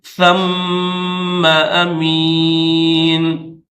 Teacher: میم مشدد ہے اس کے اوپر غنہ کریں گے